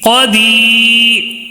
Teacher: دی کو کیوں کھینچ رہے ہیں؟ اس لیے کہ یا مد ہونے کی وجہ سے، یا ساکن سے پہلے زیر ہے، یا مدہ ہے.